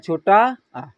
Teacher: छोटा आ जो होता है यह हमारे जीभ के मध्य भाग से इस स्वर की उत्पत्ति होती है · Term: मध्य स्वर